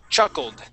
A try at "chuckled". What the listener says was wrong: All right, so we want to pronounce a D there at the end.